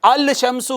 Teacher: تو شین کے ساتھ لام لگ کے پڑھا نہیں گیا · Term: لام شمسیہ